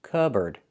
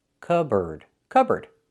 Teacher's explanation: It's pronounced cupboard. So, the P is silent.